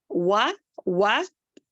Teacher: वाव को गोल करेंगे, उसको यानी कि होठों को ना मिलाएंगे